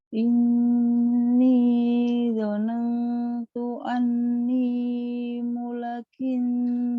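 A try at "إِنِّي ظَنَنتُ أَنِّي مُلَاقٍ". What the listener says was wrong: Mula panjang Kak. Mula.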